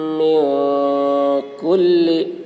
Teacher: نون ساکن کے بعد حروف اخفا میں سے کاف آ رہا ہے، اس لیے نون کی آواز کو ناک میں چھپا کر پڑھیں گے، اس کو اخفا کہتے ہیں.